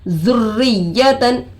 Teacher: رو پر تشدید آ کر ہے روئے مشددہ ہوگا. روئے مشددہ کے نیچے زیر آ کر ہے. رو کو باریک کر کے پڑھیں گے. یا پر تشدید آ کر ہے 2 مرتبہ پڑھیں گے.